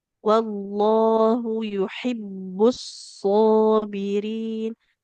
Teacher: kalau huruf ha dia di tengah tenggorokan. Jadi antara ha yang dilafaz Allah sama ha dikata yuhibbu itu beda bunyinya.